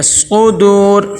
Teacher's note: صاد اور پیش کو ادا کرتے ہوئے ہونٹ گول ہوتے ہیں۔ صدور، واو دیکھیں واو مدہ آ گئی ہے، ایک الف کے برابر لمبا کریں گے۔